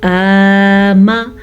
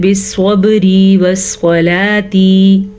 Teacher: खड़ी ज़बर की मिक़दार खींच के यानी कि लंबी करके अदा की जाती है, जबकि ज़बर की मिक़दार बहुत छोटी होती है